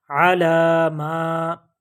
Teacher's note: کھڑی زبر ایک الف کے برابر، اسے لمبا کر کے پڑھتے ہیں